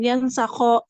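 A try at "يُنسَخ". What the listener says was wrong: Ini yunsakho dimajulkan ya.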